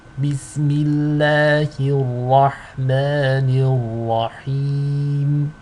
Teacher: Ni is light, ra is heavy. So notice how over here the ha is light, the ra is heavy.